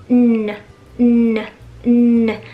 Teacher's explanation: down▁这个单词当中还有这么一个非常重要的鼻音，就是▁n▁n▁n，▁它是一个前鼻音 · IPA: /n/